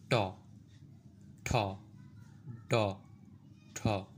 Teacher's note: জিভের সামনের অংশ উপরে গিয়ে তালু স্পর্শ করে বায়ুপথে বাধা সৃষ্টি করবে, এটাই সাধারণত মূর্ধন্য বর্ণ।